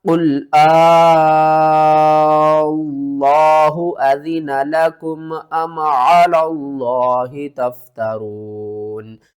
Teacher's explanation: یہاں پر ایک تو آپ نے لفظ اللہ کو پر کر کے پڑھنا ہے اور دوسرا لفظ اللہ سے پہلے والا جو لام ہے اس کو آپ نے چھوڑ دینا ہے۔ یہاں پر بھی جو مد ہو رہی ہے وہ ہو رہی ہے مد لازم کلمی مثقل، اس کو بھی آپ نے 5 الف کے برابر کھینچ کر پڑھنا ہے۔